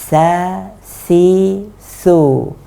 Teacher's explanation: ujung lidah bertemu dengan gigi seri atas dan ini tidak keluar banyak angin · artinya yang dari atas ini benar-benar tertutup oleh oleh lidah jadi ujung lidah ini benar-benar menutup ujung gigi seri atas sehingga angin yang dari atas ini tidak keluar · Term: huruf tsa